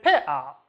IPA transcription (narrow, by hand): peʔa